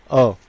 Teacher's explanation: अब आप अ का उच्चारण कीजिए, इसमें होठ पूरे वर्ताकार गोल नहीं हो रहे हैं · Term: अवर्ताकार स्वर